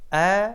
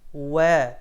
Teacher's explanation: হামজা উচ্চারণের সময় মাখরাজে ধাক্কা দিতে হবে, শক্ত করতে হবে, আর ওয়াও উচ্চারণের সময় মাখরাজে কোনো প্রকার চাপ সৃষ্টি ছাড়া সহজে নরম করে আদায় করতে হবে। ওয়াও আদায় হবে ঠোঁট থেকে দুই ঠোঁট গোল করে।